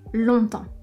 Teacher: on ne prononce pas le G final, et le mot temps où on ne prononce pas non plus le P et le S à la fin